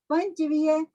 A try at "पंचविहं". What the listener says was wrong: पंचविह नहीं, पंचविहम पंचविहम